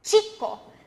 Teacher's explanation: Your tongue is sort of blocking the air from coming out. That's what produces the ch sound instead of the sh sound.